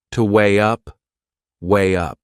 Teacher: we insert a little Y sound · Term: linking sound